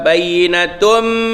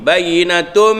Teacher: Bayyinatun tanwin bertemu dengan mim idgham ma'al ghunnah, idgham beserta dengung. Maknanya tanwin itu kita masukkan ke dalam mim beserta dengung.